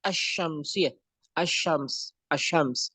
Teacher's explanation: tidak al syams tapi asyams. Jadi dimasukkan, diidghamkan.